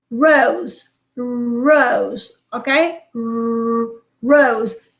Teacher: You put the tip of your tongue a bit behind, okay, the point of articulation of the soft ra in Spanish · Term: post-alveolar